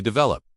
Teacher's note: develop with the stress on the second syllable, not develop.